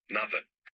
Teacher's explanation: European Portuguese has the soft D sound, while some Brazilian accents don't.